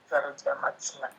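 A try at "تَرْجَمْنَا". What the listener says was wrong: Tarjamna, mimnya sukun, nah, nun fathah. Tarjamna.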